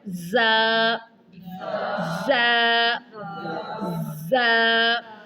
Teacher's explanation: زبان کی نوک جب ثنایا سفلا کے کنارے سے ٹکرانے کے ساتھ ساتھ ثنایا علیا سے بھی لگے تو یہ حروف ادا ہوں گے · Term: سٹی والے حروف